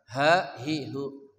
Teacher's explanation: ha dari pangkal kerongkongan kita